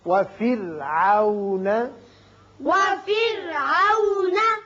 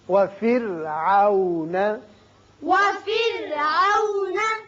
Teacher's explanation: را کو باریک پڑھیے اس لیے کہ پیچھے زیر ہے